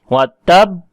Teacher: تو کیونکہ با جو ہے وہ یہ والا حرف ہونٹوں سے ادا ہوتا ہے، تو ہونٹوں کو تو اس حرف کو جب ہم جزم کے ساتھ پڑھیں گے تو ہونٹ مل جائیں گے، تو یہ پہلا حرف ساکن واضح ہو جاتا ہے وَتَب، اور پھر ہونٹوں کو ہم کھولیں گے، قلقلہ کریں گے تو ب کی آواز آئے گی